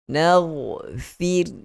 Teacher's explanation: Ra mati sebelum dia berbaris bawah. Tentu sekali kita sebut dengan ra yang nipis.